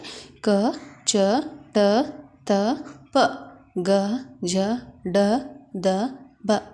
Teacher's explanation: ಕಡಿಮೆ ಉಸಿರಿನಿಂದ ಉಚ್ಚರಿಸುವ ಅಕ್ಷರಗಳೇ ಅಲ್ಪಪ್ರಾಣ